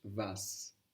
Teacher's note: We have the W sounding like a V and the T to S switch.